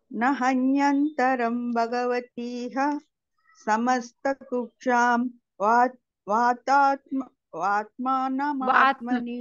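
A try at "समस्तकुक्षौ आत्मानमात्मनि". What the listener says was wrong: మాతాజీ ఇది వా కుక్షౌ అయిపోతుంది అక్కడ, సమస్త కుక్షౌ అని చదివేసి ఆత్మానమాత్మని అని చదవండి.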